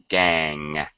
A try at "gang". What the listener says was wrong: No G sound. Gang.